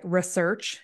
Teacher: the emphasis on the second syllable